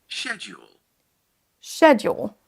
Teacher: Vous entendez qu'on démarre avec son ch et c'est la première syllabe qui est accentuée.